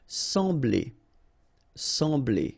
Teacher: So EM will give you the sound en. Okay, so you don't pronounce the M, you just get the sound en.